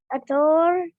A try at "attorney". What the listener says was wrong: Which is how? In your English? We said what here? Ator. We have only one syllable that we didn't use. Attorney. Attorney.